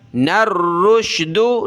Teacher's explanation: نون کو را کے ساتھ ملایا، اس دال کو بالکل بھی نہیں پڑھنا